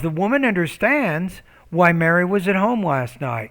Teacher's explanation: So right before that dependent clause, you have a short pause. Your tone goes up slightly.